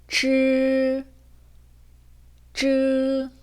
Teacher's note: 르를 발음할 때보다 혀가 완전히 붙었다가 떨어지는 느낌이 나실 거예요.